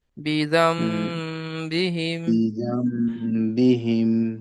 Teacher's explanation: >> জিনুন সাকিনের পরে বা এসেছে >> তাই বাকে >> তাই নুনকে মিমের দ্বারা পরিবর্তন করে এক আলিফ পরিমাণ গুন্না করে পড়তে হবে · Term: ইকলাব